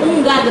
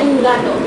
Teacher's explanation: We don't say un gato, we say un gato. So everything is velar, un gato.